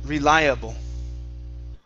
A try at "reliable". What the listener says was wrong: Okay, give me a good R instead of re.